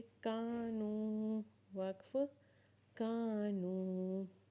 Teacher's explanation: काफ अलिफ ज़बर का को एक अलिफ के बराबर खींचेंगे और नून वाव पेश नू को भी एक अलिफ के बराबर खींचेंगे, क्योंकि यहाँ पे काफ अलिफ ज़बर का अलिफ मद्दा वाला हर्फ है और नून वाव पेश नू वाव मद्दा वाला हर्फ है।